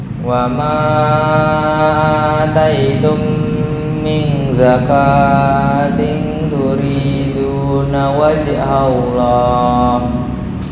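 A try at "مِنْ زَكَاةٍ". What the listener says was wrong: Zakah tadi kepanjangan.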